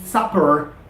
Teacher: Your upper lip touches your lower lip for a fraction of a second